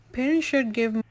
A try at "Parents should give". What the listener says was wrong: So parents, parents. You didn't pronounce that P enough.